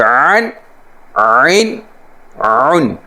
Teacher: عین جو ہے اس کو اچھی طرح گلے کے درمیان سے نکالیں گے